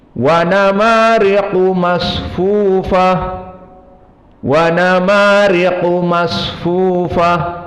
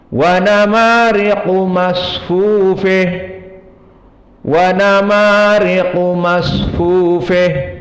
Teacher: maka mereka semuanya membaca sama dengan fathati ha at-ta'nis, masfufah, masfufah. Adapun Al-Kisai berkesendirian qara'a bi imalah ha at-ta'nis, maka dibaca masfufeh, masfufeh.